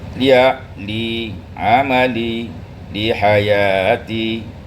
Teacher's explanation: Dan kasrah tengah lidah dinaikkan, maka bunyinya seperti I dan mempengaruhi bentuk bibirnya.